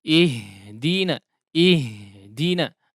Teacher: dia keluar dengan deras ya, dengan udara yang cukup deras sehingga cukup boros untuk udara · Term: huruf H